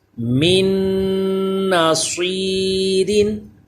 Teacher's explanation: صاد پر پڑھا جائے حروف مستعلیہ ہے